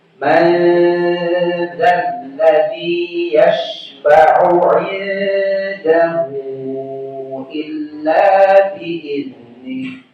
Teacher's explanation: nun sukun bertemu huruf zal, ikhfa, ada gunnah. Gunnahnya dibaca tipis.